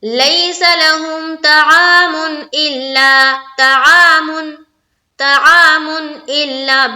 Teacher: بالکل بھی دیر نہیں لگانی ہے، بالکل بھی ناک میں آواز نہیں لے جانی ہے